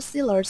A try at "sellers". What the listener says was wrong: It's sellers, not sailors. Sellers.